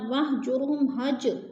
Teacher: हज पे कलकला हो रहा है, जीम साकिन है और कलकला में से है